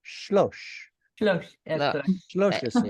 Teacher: Instead of Shalosh Esrei, it's going to get a reduced shva.